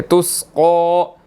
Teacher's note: क़ाफ जो है वो मोटा है और इसके ऊपर खड़ी ज़बर है, इसको हमने 1 सेकंड जो है वो 1 अलिफ के बराबर खींचना है